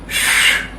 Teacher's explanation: Now, the SH is described as a unvoiced fricative. What that means is that the sound is an unvoiced consonant, and a fricative is a description which means that there are sort of two sounds making up the one.